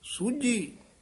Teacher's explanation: ਸੂਜੀ ਕਸ ਕੇ ਬੋਲਣਾ, ਝੱਜੇ ਨਾਲ ਸੂਜੀ ਨਹੀਂ ਕਹਿਣਾ